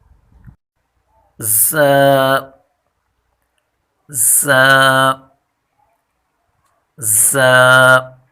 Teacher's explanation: ز ز ز ز کی مخرج زبان کی نوک جب ثنایا سفلا یعنی نیچے کے دو دانتوں کے کنارے سے ٹکرانے کے ساتھ ساتھ اوپر کے دو دانتوں سے لگے تو یہ حرف ادا ہوتا ہے۔ اور ز حرف سیٹی والا ہے، یعنی تیزی والا حرف ہے، اس میں تیزی سے پڑھیں گے اس کو۔